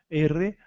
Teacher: O R sempre vai forçar vibrar um pouquinho a língua, a ponta da língua